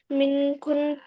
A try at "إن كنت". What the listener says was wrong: من नहीं इन कुंता।